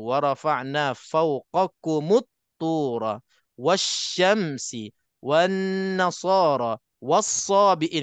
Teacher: Sebut dan yang lain-lain sebut kita tak dibaca lam itu tak dibaca terus kita lompat ke huruf yang ada sabdu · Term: Idgham Syamsi, idgham syamsi